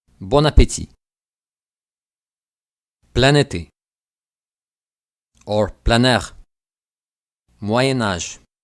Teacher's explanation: In nasal vowels such as on, the final N will be pronounced.